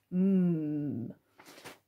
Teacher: It is just m, stays, comes out your nose, stays in your mouth